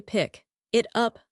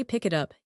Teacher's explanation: If I try to say pick it up, I have to stop my breath three times. If I say pick it up, it is one long breath.